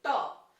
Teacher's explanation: हमारी जो जीभ है वो तालू से थोड़ा आगे और मसूड़े से थोड़ा पीछे जाकर के ट ठ ड ढ ड़ के उच्चारण में स्पर्श करेगी। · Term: ट वर्ग